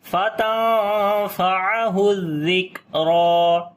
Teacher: را کو موٹا پڑھیں گے اور لمبا بھی کریں گے کھڑی زبر کے ساتھ